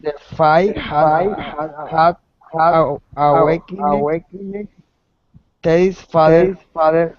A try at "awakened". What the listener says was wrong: Again with the final D sound. Awakened. Good.